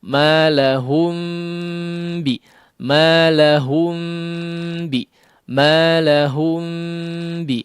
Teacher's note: huruf mim kan tidak diucapkan dengan menekan kedua bibir ya menyentuhkan secara halus saja